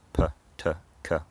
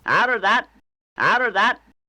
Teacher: even though the tongue goes to the right place, there's no audible release of the air